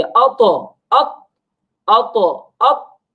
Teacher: ता साकिन है तो इसको झटका देकर हम पढ़ेंगे अतो अत, अतो अत, तो झटके के साथ पढ़ेंगे, बगैर झटके के नहीं पढ़ेंगे। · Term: कलकला